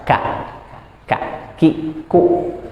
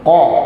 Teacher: Ada hamznya sedikit, dia bukan jahar. Kalau qaf memang dia jahar, jadi harus jelas. Tidak keluar angin. Ko. Enggak keluar angin dia.